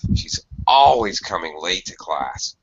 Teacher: you would hear this in conversational English with the intonation. She's always coming late to class, usually exaggerating the adverb